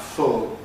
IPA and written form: fʊl (full)